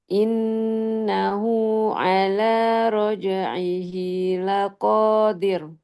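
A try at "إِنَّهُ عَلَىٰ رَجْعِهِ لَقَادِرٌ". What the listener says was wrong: Ro tipis. Ya, dan tebalkan ro di roja'i. Roja'ihi.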